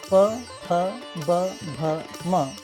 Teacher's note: औष्ठ्यवर्ण उच्चार करताना दोन्ही ओठ एकमेकांना भिडतात किंवा जवळ येतात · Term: ओष्ट